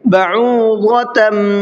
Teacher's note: ضاد کو منہ بھر کے پڑھنا ہے، تن کے اندر اخفا ہوگا، اس لیے کہ تنوین کے بعد میں فا ہے۔